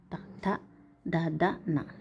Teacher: ఇవి జిహ్వాగ్రము, వీటిని దంత్యాలు అంటారు. దంతాలను జిహ్వాగ్రము తాకులతో పలికేవి